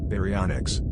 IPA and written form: ˌbæriˈɒnɪks (Baryonyx)